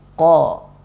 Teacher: Caranya biasanya Ana menyarankan bahwa ketika melafadzkan huruf qaf itu ditempelkan dulu makhrajnya belakang lidah, ditempelkan ke langit-langit belakang. Kemudian kalau sudah yakin baru kita lafadzkan ko, seperti itu.